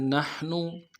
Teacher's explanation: نون کو ہا کے ساتھ ملائیں گے، ہا کو گہرائی سے ادا کریں گے، اگلے نون کو لم سے ادا کریں گے۔